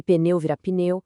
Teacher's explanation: A gente acrescenta vogais para quebrar encontros de consoantes que são difíceis